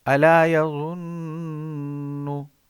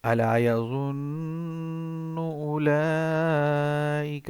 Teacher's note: اب زوا کی آواز آنی چاہیے. زوا کی آواز تھوڑی پتلی ہوتی ہے، نرم ہوتی ہے